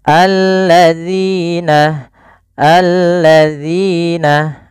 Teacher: melafalkan Zina di sini jangan kita baca dengan zina tapi alladzina jangan sampai kita merubahnya menjadi huruf Zai ini yang sering terjadi kesalahan yaitu menggantinya dengan huruf Z Padahal di sini adalah huruf dalal yang makhrajnya adalah ujung lidah